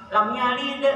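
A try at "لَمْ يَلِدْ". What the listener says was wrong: Nah itu loncat ya sempurnakan bunyi mimnya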